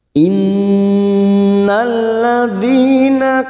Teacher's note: Nun yang bertasdid gunna musadadah kita dengungkan selama tiga harakat · Nun yang bertasdid gunnah musaddada kita dengungkan selama 3 harokat. Innalladzi masuk pada alif lam syamsiyah, atau ini yang disebut dengan idgham syamsiyah.